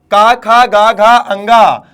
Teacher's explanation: तो उच्चारण कहां से होगा भैया, कंठ से होगा